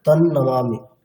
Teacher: মানে অনুস্বারটাকে ন উচ্চারণ করলে তানমামি এটা শুনতে আরো ভালো লাগবে